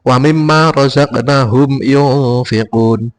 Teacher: Agak kilas balik juga bahwa yang di sini yang saya lingkari ini berarti bacaan ikhfa dengan ketentuan menurut ilmu tajwidnya, yaitu bacaan ikhfa berdengung. Yang semula bacaan nun sukun ataupun tanwin itu yang bunyinya n diubah ataupun berbunyi menjadi ng atau eng ya.